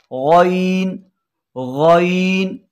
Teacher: गौइन हलक के ऊपर वाले हिस्से से, जिसे हम इब्तदाई हलक कहते हैं, गौइन अदा होगा